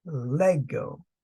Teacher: pronounced Lego the accent on the first syllable